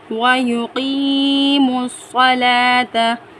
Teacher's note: وَيُقِيمُوا الصَّلَاةَ، قاف یا زیر کی یا ساکن سے پہلے زیر یعنی یا مدہ، اس کو ہم ایک الف کی مقدار کھینچ کر پڑھیں گے